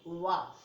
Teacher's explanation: दंतोष्ठ है जिसका उच्चारण कह रहे जिनका उच्चारण दांत तथा ओठों की सहायता से होता है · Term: दंतोष्ठ वर्ण